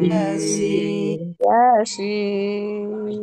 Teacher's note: Jadi Yasin langsung sinnya. Sinnya harus enam enam harakat ya secara kaidah.